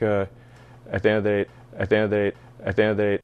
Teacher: In this example of fast speech, the grammar words almost disappear. You only hear the content words.